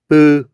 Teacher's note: 파열음 같은 경우에는 공기의 흐름을 막았다가 터트리면서 내는 소리.